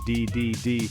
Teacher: placing the tip of your tongue behind your upper front teeth and then releasing a small burst of air this sound is very distinct and important in many words try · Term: letter D